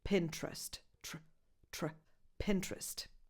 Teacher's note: The trick here is simply to remove the second vowel, the E between the first T and the R